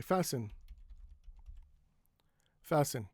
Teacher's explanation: in some words the t is silent after an s